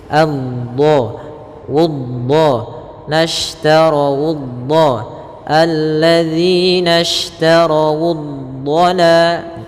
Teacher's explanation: Dia memanjang huruf dhadnya.